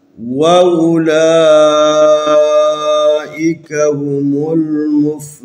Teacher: واو حروف مدی ہے، ساکن بھی ہے، اور اس سے پہلے ہا کے اوپر پیش بھی ہے، لذا اس کو تھوڑا سا کھینچ کے لمبا کر کے پڑھنا ہے